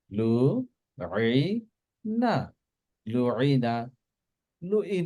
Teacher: আইনটা ঠিক কণ্ঠনালীর মাঝখান থেকে আমরা চেষ্টা করব প্রোনাউন্স করার জন্য